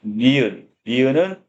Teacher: 혀끝 이 윗니 뒤쪽 의 윗잇몸 능선 에 닿았다가 벌어 집니다